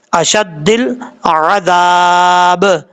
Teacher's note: حمزہ زبر آ شین دال زبر شد دال لام زیر دل اشد دل عین زبر ع دال الف زبر ذا با زیر بی عذابی، جب وقف کریں گے تو با ساکن ہو جائے گا، اشد دل عذاب، ذال کو بغیر سیٹی کے ساتھ پڑھیں گے